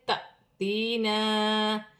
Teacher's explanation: الف پر جزم کی حرکت ہے، جھٹکے کے ساتھ پڑھا جائے گا